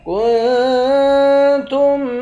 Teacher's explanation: کاف کو نون کے ساتھ ملا کر نون پر اخفا کریں گے، تا کو میم کے ساتھ ملا کر میم پر غنہ کریں گے۔